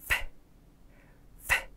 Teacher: 발음을 할 때에는 성대의 울림이 없어요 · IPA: [f]